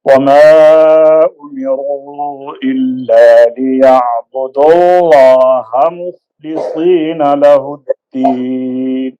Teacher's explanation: ليعبدوا اللہ کے ہا کو لمبا نہیں کرنا جلدی سے میم کو پڑھ لینا ہے